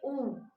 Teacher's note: तो देखो आपके जो होठ है वो बाहर की तरफ होते हैं, ऊ। तो आपके जो ऊ और ये बड़ा ऊ है ये आपके आ जाएंगे ओष्ठ में।